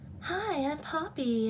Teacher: very soft and, like, almost breathy